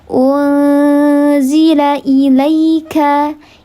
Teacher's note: Namanya ikhfa hakiki ausat karena nun sukun bertemu dengan salah satu huruf ikhfa hakiki ausat. Dibacanya disamarkan disertai dengan ghunnah tiga harakat. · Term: ikhfa haqiqi awsat